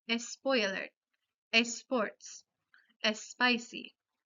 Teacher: con los anglicismos que empiezan con la consonante S, añadimos el sonido vocálico E en frente de la palabra